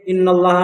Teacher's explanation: لفظ اللہ کے لام سے پہلے زبر ہے، اس لیے لفظ اللہ کے لام کو پر پڑھیں گے